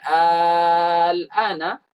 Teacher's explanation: Tapi kalau kita panjangkan al-ana, nah, maka di sana ada makna sebuah pertanyaan. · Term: maddul farq